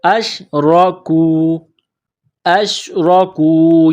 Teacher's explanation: را کے اوپر زبر ہے، را کو موٹا کرنا ہے